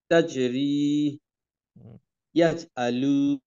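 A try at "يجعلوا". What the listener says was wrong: টান হবে না, ইয়াজ আলু।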